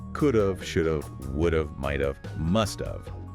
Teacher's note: It commonly reduces to sound exactly like the word of, pronounced V.